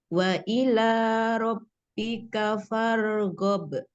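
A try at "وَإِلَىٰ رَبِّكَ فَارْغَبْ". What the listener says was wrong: Iya, Masya Allah. Alhamdulillah. Barakallahu fiik.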